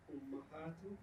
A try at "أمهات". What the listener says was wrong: Ummahat al-talibat. Ummahat with a fatha though. Ummahat.